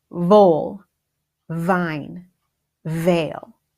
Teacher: F sound is teeth lower lip air full fine fail and the V sound is teeth lower lip vibration